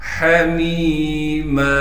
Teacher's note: میم پر تنوین کو صاف کر کے واضح طور پر پڑھیں گے بغیر غننے کے، حمیم، ہا کو صاف کر کے گلے سے نکالیں گے، اسی طریقے سے میم کو یائے مدہ سے ملا دیں گے اور میم کو ایک الف کے مقدار کھینچیں گے۔